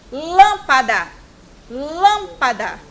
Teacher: Olha como o lã é falado com mais força. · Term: sílaba tônica